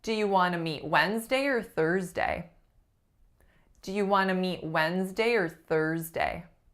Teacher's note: my beautiful R-colored vowel, or, turned into a slightly shorter and less complex vowel